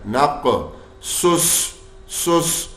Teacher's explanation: نق قاف موٹا بھی پڑھیں گے اور حروف قلقلہ بھی کر رہا ہے, ساکن حالت میں آ رہا ہے. نق سس سس سواد موٹے ہیں اور سیٹی کی آواز بھی نکال رہے ہیں